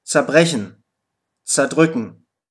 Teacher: Und die Vorsilbe ZER wird häufig einfach ZA ausgesprochen.